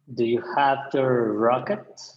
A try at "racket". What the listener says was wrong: Careful, the rocket would be like NASA. Racket, racket.